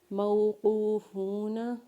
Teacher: جب قاف کو اور فاؤ کو واو مدہ کے ساتھ پڑھیں گے تو قاف کو اور فا کو ایک الف کے برابر کھینچیں گے